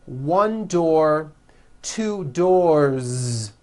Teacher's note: 1 door, 2 doors, with a voiced Z ending.